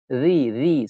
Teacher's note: Saya dengar tadi bacaan dia, huruf dia zal. Cantik, bagus. Lidahnya pada gigi depan.